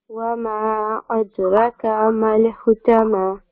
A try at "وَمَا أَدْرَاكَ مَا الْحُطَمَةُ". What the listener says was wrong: No. Wa ma adraka. There is a alif with the ra. Adraka ma al hutama.